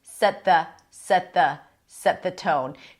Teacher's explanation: The T is slightly aspirated.